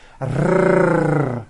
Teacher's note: the R is produced by bringing the tongue forward in the front of the mouth, behind the upper teeth, and rolling